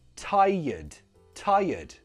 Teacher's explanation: Don't pronounce the R. It's more like a Y.